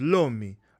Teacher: when you see that apical alveolar vibrant consonant, the r, and it turns into the l, like a liquid